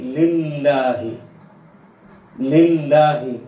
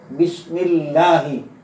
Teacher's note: যেমন আমরা এখানে পেয়েছি লিল্লাহি, লিল্লাহি, লফজে আল্লাহ লামের আগের যে হরফ, এই হরফের নিচে আছে কসরা বা জের, এই কারণে ওটাকে পুর পড়া যাবে না, বরং বারিক করে পড়তে হবে।